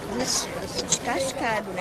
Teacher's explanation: Esse S meio misturado com X, trocando o E pelo I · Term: chiado